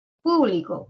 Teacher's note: el acento en la primera sílaba o en la antepenúltima